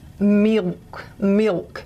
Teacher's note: english l is what's called a dark l and instead of being a a just a purely tongue tip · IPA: /mɪlk/